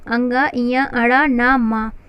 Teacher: नासिक अर्थात हवा का ज़्यादा से ज़्यादा जो भाग है वह उच्चारण के समय नासिका से जब निकलती है, नाक से जब निकलती है तो ऐसे जो वर्ण होते हैं उच्चारण के समय उन्हें जो उच्चरित होते हैं उन्हें नासिक वर्ण कहा जाता है।